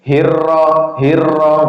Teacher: huruf ro berharakat kasrah maka r-nya itu dibaca tipis. Bunyinya kayak gini.